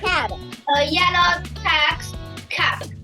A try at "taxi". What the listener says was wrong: Ooh, not bad. You forgot the I. Say taxi.